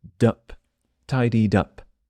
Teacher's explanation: the last letter of tidied jumps to the next word